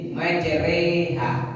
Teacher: Jadi majreha, ya, bacaan imalah, memiringkan bunyi fathah kepada kasrah